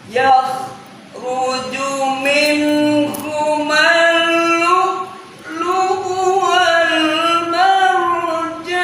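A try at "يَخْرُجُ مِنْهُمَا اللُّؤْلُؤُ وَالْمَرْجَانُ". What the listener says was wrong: Ya, naik awalnya ketinggian ya. Yakhruju.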